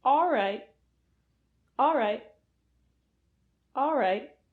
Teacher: So you never hear the l of all. You just hear ah and then r.